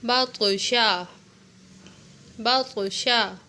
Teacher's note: با طا زبر باط، شین زبر شا، باطشا۔ اب یہاں پر طا حروف قلقلہ میں سے ہے تو اس کو تھوڑا سا ڈھیلا کر کے پڑھیں گے